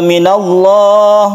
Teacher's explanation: Minallah ini lafaz Allah yang dibaca tafkhim atau tebal karena sebelumnya ada huruf yang berfathah.